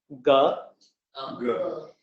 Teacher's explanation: Again, you should feel no breath. This is known as non-aspirated, a soft sound.